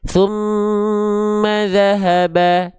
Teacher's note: pastikan kalau nemuin gunah seperti ini jangan lupa ditahan dua harakat ya